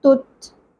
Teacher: تا پیش، آگے تا ساکن ہے، تت، ٹھیک ہے؟ ایک بات کا خیال رکھیں کہ تا ساکن کے اوپر قلقلہ نہیں ہونا چاہیے، تت اس طرح نہیں پڑھنا۔